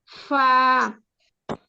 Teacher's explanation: নিচের ঠোটের পিঠ সামনের উপরের দুই দাতের সঙ্গে লাগিয়ে